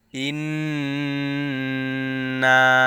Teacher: আলিফ নুনজের ইন, ওয়াজিব গুন্না, নুনের উপরে তাসদিদ আসছে। নুন আলিফ জবর না, ইন না।